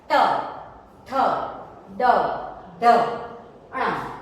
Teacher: इनके उच्चारण के वक्त आप देखोगे कि आपकी जो जीभ है, आपकी जो टंग है, वो कहाँ टच हो रही है? दांत के पीछे वाले जो हार्ड पार्ट है, जो आर्च शेप का पार्ट है, वहां पे टच होती है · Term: रेट्रोफ्लेक्स